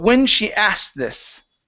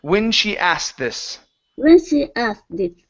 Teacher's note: so drop that K and use a T. The T is going to combine with the TH in this.